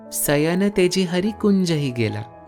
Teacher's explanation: Brajabuli isn't as rounded as Bengali the ending sound is -a and not -aw